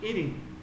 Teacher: Y la T suena como una R.